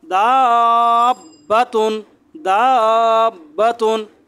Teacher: একই শব্দের মধ্যে যদি তাসদিদ আসে তাহলে এটাকে মাদ্দে লাজেমে কালমি মুসাক্কাল বলে। এটা 4 আলিফ টেনে পড়তে হবে